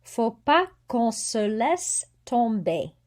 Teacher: don't pronounce the T, don't pronounce the S